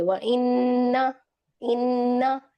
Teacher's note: जितने इन्ना आ रहे हैं उसको एक अलिफ के बराबर उसकी मिकदार पढ़ेंगे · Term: गुन्ना